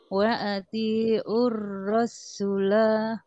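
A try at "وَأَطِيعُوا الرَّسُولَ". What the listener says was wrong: Masih, Bu, masih sinnya masih ada tasdidnya. Su-nya jadi pendek.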